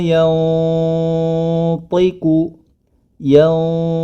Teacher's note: sukun bertemu dengan huruf tho maka hukum bacaannya adalah ikhfa dikarenakan huruf tho di sini memiliki sifat yang tebal maka ketika masuk ke th ya dia menjadi tebal